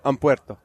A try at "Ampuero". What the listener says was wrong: There's no T.